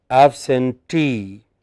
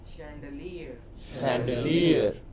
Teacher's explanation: Here the suffix itself is stressed.